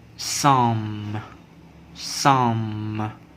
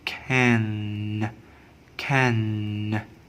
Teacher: a vowel is nasalized when it occurs before a nasal consonant. Nasal consonant are n, m, and ng sound.